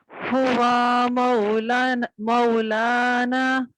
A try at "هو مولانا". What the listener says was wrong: सिर्फ वाव ना खींचना, नहीं खींचना। मौलाना। गौर कीजिए, हुआ नहीं, वाव खींच रहा है ना, खींचना नहीं है। हुआ मौलाना, हुआ वाव का जबर जल्दी से पढ़ेंगे दोबारा।